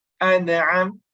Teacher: Too much stressing on the sifatun nun until it becomes like a qalqala